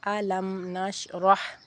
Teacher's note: اظہار شفوی میم ساکن کے بعد با اور میم کے علاوہ کوئی اور حرف آنے کی صورت میں میم ساکن کو اس کے مخرج سے ظاہر کر کے پڑھنا